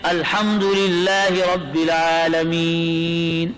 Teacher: ہم جو کہتے ہیں رب العالمین، تو یہ یا مدہ محل مد ہے اور نون پر جو سکون آ گیا سکون عارضی وقف کی وجہ سے وہ سبب مد ہو گیا، دونوں جمع ہو گئے. اب لمبا مد کرتے ہیں الحمدللہ رب العالمین.